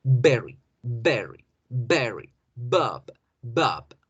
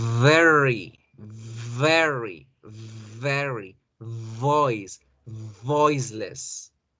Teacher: Pero la V yo puedo alargar el sonido hasta que se me vaya el aire. · La B bilabial genera una explosión y hasta ahí llegó el sonido. Mientras que la V o la V labiodental lo que va a generar es una fricción en los labios hasta que a mí se me dé la gana de soltar la letra.